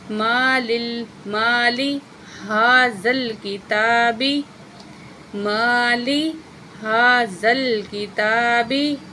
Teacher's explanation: ہا کے اوپر کھڑی زبر ہے، ایک الف کے برابر کھینچیں گے